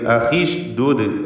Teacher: ഉഷ്ദുദ് ദാലിന് ളമ്മാണ്, അതുകൊണ്ട് ഹംസക്കും ളമ്മ്. ഉഷ്ദുദ് ചേർത്ത് ഓതുകയാണെങ്കിൽ അഖിഷ്ദുദ് എന്ന് ഹംസ ഇല്ലാതെ പോകും